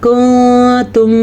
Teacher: یہ دیکھیں یہ نون ساکن ہے اور نون ساکن کے بعد حروف اخفا میں سے تا آیا ہوا ہے، تو یہاں پہ بھی اخفا کا قاعدہ ہو رہا ہے